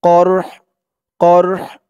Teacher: এখানে থামার কারণে কফ দিয়ে র কেও ধরবে, হা কেও ধরবে, হার আওয়াজটা লাস্টে একটু ভাসবে